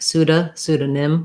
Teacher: when we put it together with another word letter o is a schwa the ah sound